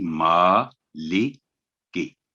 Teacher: میم پر کھڑی زبر ہے، 2 سیکنڈ کی آواز لمبی ہوگی